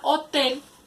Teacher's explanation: La palabra hotel también se divide en dos sílabas. Lleva la acentuación en la sílaba tel. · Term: sílaba tónica